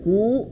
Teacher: Ku gitu panjang dua harakat. Nah, tapi ini kalau ini an ini harus lebih lama daripada matibi. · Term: mad thabi'i